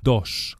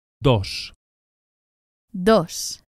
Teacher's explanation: softer than in English and it's produced with the tongue flat against the gum Ridge against the top of the mouth not the tip of the tongue as in English not but a light with the tongue flat at the top